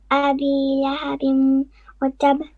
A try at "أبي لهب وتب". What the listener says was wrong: You paused again on lahabin. You pause. You should not pause. It's lahabin watab.